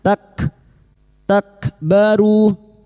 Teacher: Huruf kaf ini memiliki sifat hamas dan syiddah, maka pada saat disukun bunyinya tak, takbaru.